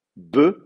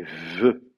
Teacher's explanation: le B est occlusif, le V est fricatif